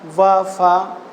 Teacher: ये निचले ओठ तथा ऊपरी दांतों से बोले जाते हैं और दांत और ओठों से मिलकर बने जाने वाले के कारण इसे दंत प्लस ओष्ठ कहा जाता है, इसीलिए इसे दंतोष्ठ बोल सकते हैं।